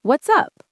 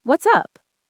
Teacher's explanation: The T sound disappears.